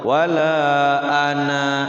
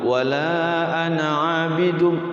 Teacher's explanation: kalau kita wakafnya di kalimat ana itu nanya itu panjang tapi kalau diwasal ananya selalu pendek